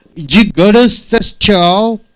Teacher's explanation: D and Y joins together to give Jew sound.